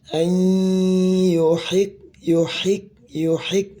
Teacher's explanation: Ay masukkan ke hidung ya